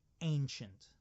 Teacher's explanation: Now, that C in ancient makes a ch sound